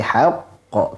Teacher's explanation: Dan qalqalahnya di sini bertasydid dalam kondisi waqaf, kita tahan sejenak.